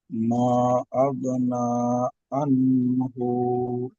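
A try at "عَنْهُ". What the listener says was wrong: আনহু গুন্না করছেন কেন ভাই এখানে, আনহু? আগনা আনহু, আনহুমা, আনহুমা লুহু। এই যে আনহু টান হবে না, কিন্তু মালুহু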